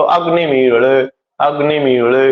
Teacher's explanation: 2 स्वरों के बीच में जो लकार आता है उसका उच्चारण लो लो इस तरह से किया जाता है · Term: दुष्पृष्ठ